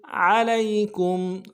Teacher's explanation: عین کو موٹا ادا کرنا ہے، لام کو یا کے ساتھ ملانا ہے، یا لین ہے، بغیر کھینچے پڑیں گے.